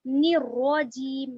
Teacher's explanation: نر نون سے را کو ملائیں گے اور را کو یہاں پر موٹا کر کر پڑھیں گے